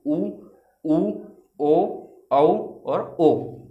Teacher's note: होंठ की हम स्थिति देखेंगे तो वो क्या होगी? इसमें गोल हो जाएगी।